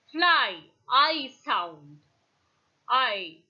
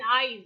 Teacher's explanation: Okay, and during the articulation of this tongue I, the glide begins near the front open unrounded position and moves in the direction of the RPI, that is a front unrounded vowel, just above half close. The lips are neutral at first and then are loosely spread. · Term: diphthong I